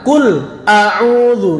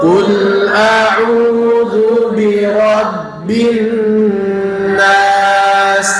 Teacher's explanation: Qul a'udzu itu huruf lamnya kul a itu ndak boleh diputus ya. Jangan kul a'udzu, ndak boleh ya.